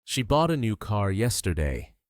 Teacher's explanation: The stressed words are bought new car yesterday. The words she in a shrink.